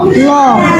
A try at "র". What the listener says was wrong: র র র র বয়কের বে রয়কার রাত বেরাত। তুই র উচ্চারণ করতে পারো না।